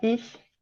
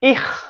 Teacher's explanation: de la fricativa palatal, que se utilizaría en alemán estándar, ich, a una velar que se utiliza en el suizo, ich, y que se puede llegar incluso a geminar.